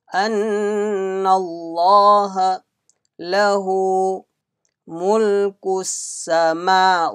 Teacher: Lam of Allah will be read with full mouth.